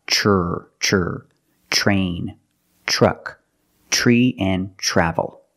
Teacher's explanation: Use the ch plus the R, the voiced R sound.